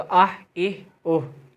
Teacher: हा जो है वह हलक से निकलेगा यह बड़ा हा है बड़ा हा हलक से निकलता है